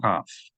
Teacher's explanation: Sound of het should not be mistaken for the sound of chaf. When you make the sound of chaf, you should feel friction between the back of your tongue and the roof of your mouth. Chaf. You should not feel this contact between the back of your tongue and the roof of your mouth when you make a het.